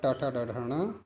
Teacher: ऋतु रसाणाम मूर्धा, री, ट वर्ग, र और श। ट वर्ग अर्थात ट ठ ड ढ ण और श का मूर्धा स्थान होता है। इनका उच्चारण करते समय जिह्वा मूर्धा पर जाती है